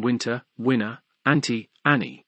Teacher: T is often lost from NT in Winter winner anti Annie though retained when the second vowel has full value and some